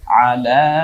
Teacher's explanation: 3 আলিফ টানতে হবে লামটাকে, লা বলে। আলা, আজ, ওয়া জি হিম, আও, মা ওকে একালিপ টানবো, জবরের পরে খালি আলিফ, মা লা কা, তারপরে শুধু তো কাত, হয় আকার আর তো কাত।